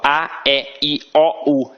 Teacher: aqui no Rio de Janeiro a nossa pronúncia é muito aberta